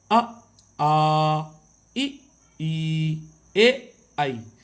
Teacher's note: इनमें होंठ गोलाकार नहीं हो रहे। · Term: आवृतमुखी